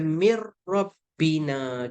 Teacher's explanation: kita nun mati jumpa ra. Masuk terus tak ada dengung. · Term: idgham bila gunnah